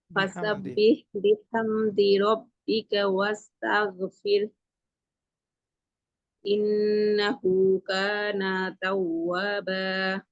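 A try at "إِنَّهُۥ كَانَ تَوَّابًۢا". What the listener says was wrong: কানা তো টেনে পড়া যাবে না, কানা তাওয়াবা, কানা তাওয়াবা।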